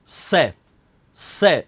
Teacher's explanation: तीसरा होता है, उसे कहते हैं दंत, जीवा दांतों को स्पर्श करती है और शीटी निकलती है, से, इसलिए इसको दंत्य से कहते हैं।